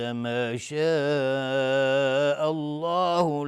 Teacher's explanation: مد واجب متصل به مقدار 4 تا 5 حرکت وجوباً مد میخواد. لفظ جلاله اینجا تفخیم هست چون قبلش فتحه اومده.